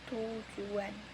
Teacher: Secara normal tujuan dibaca tujuan. Tetapi karena ada bunyi U yang membuat bibir membulat, maka bunyi teh ikut terbawa menjadi agak membulat. Seperti dengan bibir yang agak membulat sambil memonyongkan sedikit.